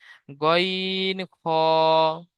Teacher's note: হলকের বা কণ্ঠনালীর শেষ ভাগ হতে উচ্চারিত হয় গইন খ। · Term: মাখরাজ